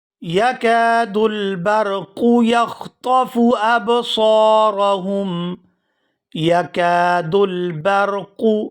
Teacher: یکاد البرق یخطف ابصارهم، یکاد البرق، یہاں را کو پورا ادا کیا جائے گا۔ را ساکن ہو اور اس سے پہلے زبر ہو تو وہ را پورا ادا ہوتی ہے، اور آگے دو نقطوں والا کاف ہے، یہ ہمیشہ ہی پورا ادا ہوتا ہے۔